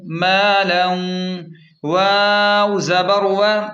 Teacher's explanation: یہاں مالن کی تنوین کے بعد واو آ رہا ہے، اس لیے یہاں ناک میں خوبصورت غنہ یعنی ادغام مع الغنہ ہوگا۔